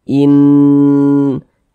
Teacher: Karena dia digunnahkan atau didengungkan, jadi dipanjangkan, ditahan suaranya, kita panjangkan sejenak. Di bagian innya itu kita tahan, kita panjangkan sejenak.